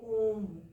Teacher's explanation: इनकी भी संख्या सात होती है तीसरा है प्लुत स्वर इसमें दीर्घ स्वर से भी अधिक अर्थात तीन मात्राओं का समय लगता है